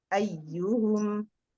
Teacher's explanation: Nah, huruf sukunnya itu diperhatikan. Kemudian ketika mendapatkan ya yang bertasdid, itu ada namanya naber, ya, menekan suara. Ayyuhum, itu dinaberkan.